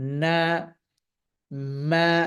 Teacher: নুন এবং মিম এই দুটি হারফের যে মাখরজ, এটি হচ্ছে দুইটি জায়গার সমন্বয়, একটা হচ্ছে নাক এবং মুখের সমন্বয়ে